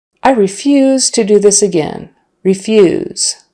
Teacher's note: Stress on the second syllable and the long e.